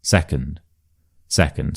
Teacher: the stress is clearly on the se and then the un is a lot quieter a lot shorter. So that is the schwa second. And then the third one's quite tricky. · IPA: /ə/